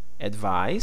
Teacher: This stress is the second syllable.